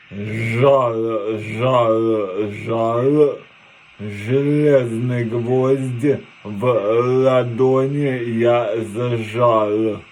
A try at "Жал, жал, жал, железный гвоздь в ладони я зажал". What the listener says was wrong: Чуть-чуть есть смягчение, но очень длинное предложение.